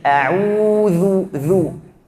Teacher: Kita harus keluarkan ujung lidah biar tidak menjadi huruf zai. Ini huruf zal, bukan zai.